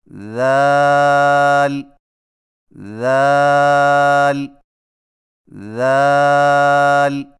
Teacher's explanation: ذال کی ادائیگی میں زبان کی نوک کو ثنایا علیہ کے اندرونی کناروں سے نرمی سے لگا کر باریک آواز میں پڑھیں